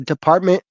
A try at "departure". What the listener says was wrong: departure. You said department.